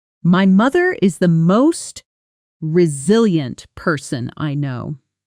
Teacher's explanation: the voice actually rises slightly on the word most and then falls warmly on no, almost like a gentle wave.